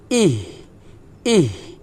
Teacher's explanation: হালকা বাতাস বের হবে খলকের শুরু থেকে, পাতলা বাতাস বের হবে। ইহ, চিকন বাতাস কিন্তু বের হবে না, পাতলা বের হবে, ইহ, এভাবে।